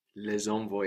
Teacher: we hit the s it reappears because of the vowel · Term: liaison